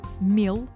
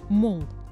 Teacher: Буква «м» в одном случае обозначает звук «ми», а в другом «м».